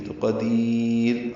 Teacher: جب بھی یا ساکن ہو اور را پہ وقف کریں، را ساکن کریں یا را ساکن ہو پڑھیں تو وہ را باریک ہوتی ہے، تو قدیر، اب را باریک ہوگی۔